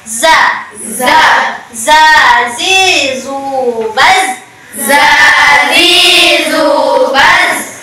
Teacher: Ujung lidah menyentuh gigi seri bawah bagian belakang.